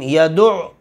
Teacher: عین حلق کے درمیان میں سے